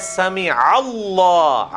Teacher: یہاں پہ اللہ بن گیا ہے کیونکہ الف سائلنٹ ہو جائے گی, عین ڈائریکٹ لام سے ملے گا